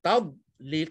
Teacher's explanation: dad bukan huruf qalqalah. Jangan ada lantunan pada huruf dad.